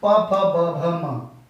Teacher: ओष्ठ जब आपके होंठ टकराएं आपस में, तब बोलेंगे आप